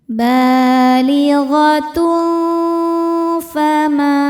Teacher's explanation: Cara bacanya tanwin disamarkan ke faertai dengungan. Samar dan dengungannya sama besar karena huruf fa makhrajnya tidak terlalu dekat dan tidak terlalu jauh dari nun. · Sebab ada alif yang sebelumnya berharakat fathah. Cara membaca huruf mimnya adalah dipanjangkan dua harakat. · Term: ikhfa hakiki ausat, mad thobi'i zohiri